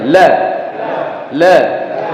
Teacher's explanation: Contohkan sekarang huruf lam. Lam ini ditahan iya sedikit, ngalir juga iya tapi tidak sepenuhnya. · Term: bainiyah